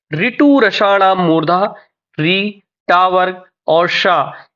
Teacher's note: ऋ ट वर्ग और श ये इनका जो उच्चारण स्थान है है ये मूर्धा